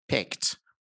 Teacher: peter piper peter piper peter piper picked so there's t here the e d here is pronounced as t